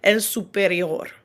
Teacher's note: when pronouncing those Spanish words that end in OR, there's a little bit of a rolled R sound at the end. It's very subtle.